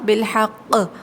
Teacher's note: ہم نے وقف کیا تو قوف کو قلقلہ کیا قوف پر